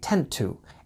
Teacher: the 2 sound becomes more of a quick d sound